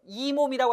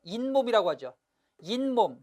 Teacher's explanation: 이와 몸이 만났는데 원래 없던 니은이 첨가됐어요. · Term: 니은 첨가 현상